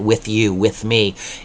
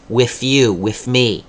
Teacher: they don't pronounce TH like that, with you, with me. Instead they make it an F, with you, with me.